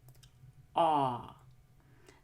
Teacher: the short back o is just rounded the tongue tip is lower than the back of the tongue and the lips are oval shaped